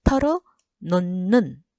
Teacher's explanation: 히읗 다음에 니은이 연결될 경우에는 히읗이 니은으로 변한다 했어요